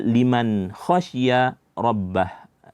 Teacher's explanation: h-nya sehingga bacaannya waruan kemudian terakhirika khbah yaik ya di sini nun mati bertemu dengan Kha hukumnya izhar maka kita memperjelas bunyi daripada huruf nun